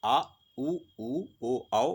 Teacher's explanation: पश्च स्वर, यह स्वर जीभ के पिछले हिस्से से बोले जाते हैं